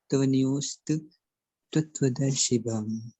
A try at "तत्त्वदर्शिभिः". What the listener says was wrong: दर्शिभम है ही नहीं है। हाँ, तत्वदर्शी भी।